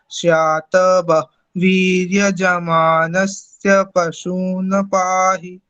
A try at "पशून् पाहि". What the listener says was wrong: और पशून पाही ऐसा ना बोल के पशून, नकार को दबाना है क्योंकि वो हलंत है। पशून पाही, ठीक है ना। ना जो है मुंह में ही रह जाए और नहीं निकल पाए, ऐसा ध्यान रखेंगे, ठीक है